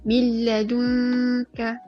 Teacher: Terus masuk dekat bunyi huruf lam. Okay. Tak ada dengung. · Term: idgham bila gunnah